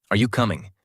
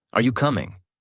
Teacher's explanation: Natural tone. Are you coming? Voice rises at the end.